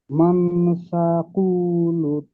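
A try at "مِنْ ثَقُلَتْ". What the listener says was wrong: উ টান কেন দিচ্ছেন, টান আছে ওখানে? মানটা গুণা করেন, মান সাকুলাত।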